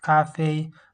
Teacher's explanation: they both have the first tone